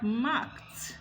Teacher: Because a mark ends with a voiceless velar plosive k, with a voiceless sound, and so the past tense marker will be realized as voiceless too.